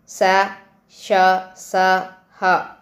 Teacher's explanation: గాలిని బయటికి ఊదుతూ పలికే అక్షరాలు స ష స హ ఊష్మాలు